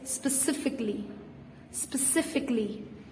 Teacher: The A, the vowel between the C and the L, is usually silent. So it's specifically.